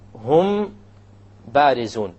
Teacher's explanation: when the meme is followed by a ba, you perform a ghunna, and that is called ikhfa shafawi.